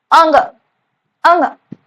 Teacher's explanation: कंठ से, गले से और थोड़ा सा नाक से उच्चारित हो रहा है।